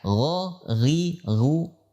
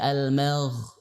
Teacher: Yang pertama, dari tinjauan nafas. Maka ghain adalah huruf yang memiliki sifat jahar, karena tidak menghentakkan nafas pada saat mengucapkan